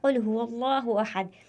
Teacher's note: زبان کی جڑ جب اوپر کے نرم تالو سے لگے تو یہ قاف ادا ہوتا ہے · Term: بڑا قاف